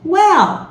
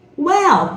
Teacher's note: o L vai lá no palato, né? Então, well, sorrisinho, well, né?